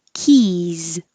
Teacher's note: Keys has the E vowel very high like eat, and the final S sounds like a Z